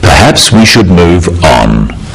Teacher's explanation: it is said in a firm way with a falling intonation at the end · This falling intonation makes it a more definite statement rather than a suggestion.